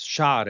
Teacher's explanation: this word changed slightly with the S sound, the strong S sound here becoming a sh sound in Arabic